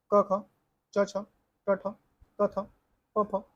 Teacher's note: प्रत्येक वर्ग का प्रथम और द्वितीय वर्ग अघोष है।